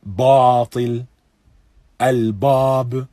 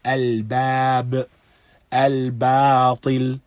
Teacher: And a common error, something that if one has a teacher, that he will correct, is reciting the ba mufakham, or the ba in a heavy manner